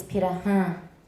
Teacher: And the R happens to be a tap.